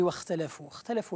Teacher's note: الخاء لم تظهر تماما، أخفيتها تماما، مع أنه كان من المفروض أن تخرج معها قليلا من النفس حتى تظهر الخاء جيدا.